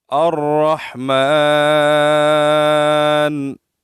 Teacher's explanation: میم کے اوپر کڑی زبر ہے اور اس کو ایک الف کی مقدار ہم کھینچیں گے، اور نون کو ہم نے یہاں ساکن کیا وقف کی وجہ سے، ہم ٹھہر گئے تو ٹھہرنے کی وجہ سے نون کا پیش ہم نے نہیں پڑھا۔